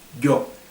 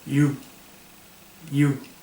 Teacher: parte trasera de la lengua con la parte trasera del paladar tendemos a pegarlo más con lo cual sale un una y un sonido de y más agresivo un poco más tajante yo pero ellos sin embargo no la pegan tanto